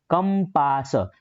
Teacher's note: આટલા ક ઉપર વજન આપવું પડે છે. દેખો કંપાસ, તો એ હું વજન આપું છું.